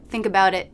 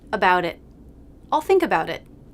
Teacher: Do you notice that I don't release the T in it? I just cut off the airflow in my throat to make that stop. Think about it.